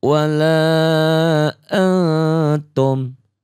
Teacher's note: dibacanya samar ya, dengung ke hidung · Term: ikhfa